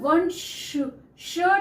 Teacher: कोई भी वर्ण लेकिन इस कि साउंड जो है वन श श जब हम बोल रहे हैं तो दांतों के पीछे से हवा बाहर को निकलती है तब वो श निकलता है